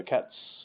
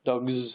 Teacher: And in English, it depends on the previous letter, or the previous phoneme, rather. So T is not voiced, so cats is with the unvoiced S. Dogs, the G is voiced, and so it's the Z sound following.